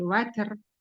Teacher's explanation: Huruf ro-nya aja yang ditebalkan, bukan huruf ta.